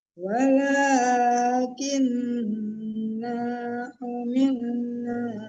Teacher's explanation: Walakinna humilna ditahan karena dengung di situ. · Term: tasdid dan dengung